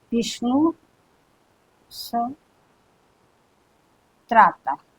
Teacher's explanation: सीधे विसर्ग के बाद में यह ता था आए तो विसर्ग के स्थान पर आपको सीधे ये दंत स कर देना है और उन सबको मिलाकर के लिख देना है।